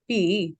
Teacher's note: the tone actually first takes a falling pattern and then it rises